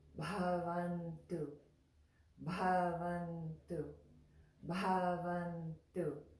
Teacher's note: So if it had no H, it would just be Ba, Ba, Ba. But when we put the H on beside it, it becomes an aspirated sound. We give it a puff of air.